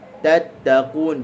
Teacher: Hujung lidah digusi tu makhraj bagi huruf ta